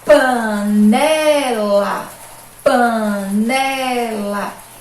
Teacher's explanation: A mais forte foi a penúltima sílaba, então a gente diz que essa é uma palavrinha paroxítona.